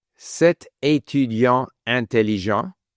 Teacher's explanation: the T is not carried over to écrit